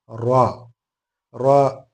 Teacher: നാവിന്റെ മുൻഭാഗം മേലെ മുൻപല്ലിന്റെ ഊനുകൾക്ക് മുകളിൽ വെച്ച് പുറത്തേക്ക് വരുന്ന ശബ്ദമാണ് റാ